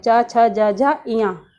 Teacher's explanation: च वर्ग आप जैसा देख रहे हैं कि हम तालू से बोलते हैं, जिह्वा हमारी जो है उसको हम ऊपर चिपकाते हैं, जो तालु कहलाता है हमारा, उससे ये शब्द निकल रहा है